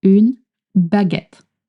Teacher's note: And you want to put the stress in get.